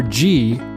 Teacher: there's no breath there it's all voice